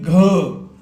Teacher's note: घर बोल के देखिए पूरा कंठस्थ ताकत निकलेगी की ग तो ग का उच्चारण स्थान कौन सा है तो हमारा कंठ है